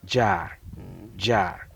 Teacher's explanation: So you hear J. You are not hearing just one sound. There's D and then J put together.